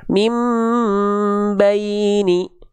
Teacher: Ditahannya 2. Ya, iklab itu artinya samar dengungkan dibalik bunyi an-nya ke bunyi am, 2 harokat ditahan.